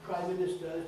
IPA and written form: ˈpraɪ ˈmɪnɪstə (Prime Minister)